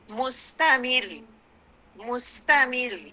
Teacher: حالانکہ را کے اینڈ پہ وہ ہے، ضمہ ہے، لیکن چونکہ میم پہ ہمارے پاس کسرہ ہے، تو ہم اس کو کیا کریں گے؟ اس را کو ہم لائٹ پڑھیں گے. مستمر، مستمر.